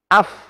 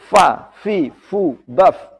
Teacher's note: Atau mengalirkan nafas. Af, ya, ada nafas yang keluar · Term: hamas